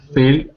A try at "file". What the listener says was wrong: Yep, and this one is file, another diphthong. File.